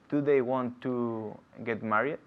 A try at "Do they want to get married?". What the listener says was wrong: Okay, es muy importante la D. En inglés no es the, es d. Do they. Con la lengua arriba. Do y th fuera. Do they want to get married? Do they want to get married?